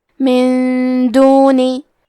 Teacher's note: دال حروف الاخفاء میں سے ہے تو ہم یہ حکم کو غنہ کے ساتھ ادا کریں گے